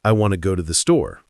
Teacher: But naturally, we stress want, go, and store. The twos are de-emphasized and reduced, often sounding like a quick t, or even just blending into the next word. So it articulates more like, I want to go to the store.